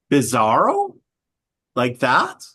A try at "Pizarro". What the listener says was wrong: With a P for Papa, not a B for Bravo.